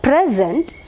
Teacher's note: stress should be marked on the first syllable if it is a noun, just like here present.